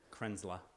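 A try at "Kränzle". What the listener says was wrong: It's Krenzla. It's not la. That's Krenzle. What I've been told by the Germans. Krenzle.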